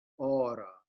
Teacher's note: the o of aura should not be ora but aura and the stress is on the first syllable